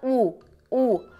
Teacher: você vai sentir que é a parte posterior dessa língua que vai levantar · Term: vogal posterior